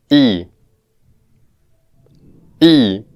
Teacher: this vowel sound is pronounced with the lips unrounded, the mouth is almost closed, and if we pay attention to the tongue, we can feel that the tip of the tongue is almost touching the teeth.